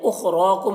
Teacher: خا کو پر پڑھنا ہے را کو پر پڑھنا ہے. کم کے میم میں اظہار شفوی ہو رہا ہے.